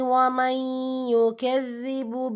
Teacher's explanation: நூன் சுக்கூனுக்கு அப்புறமா யா இதுதான் பில் குன்னா இணைச்சி குன்னா செஞ்சு ஓதணும்.